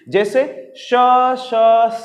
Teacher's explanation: जिसके उच्चारण पे हमारे मुख से एक ऊष्म हवा, एक गर्म हवा निकलती है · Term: ऊष्म व्यंजन